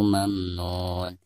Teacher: dianggap sebagai mad tabi'i karena ada vokal dammah pada nun diikuti oleh wau sukun, dibaca selama dua harakat